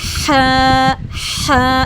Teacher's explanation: ह भी हल के दरमियान से अदा होता है। लेकिन ये मजबूत आवाज से अदा होगा। ठीक है?